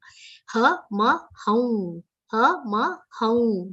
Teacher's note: The anuswar will be pronounced like a nasal vowel consonant.